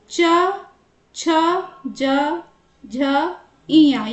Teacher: मुंह का ऊपरी भाग यानी कि तालु से बोले जाने वाले व्यंजन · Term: च वर्ग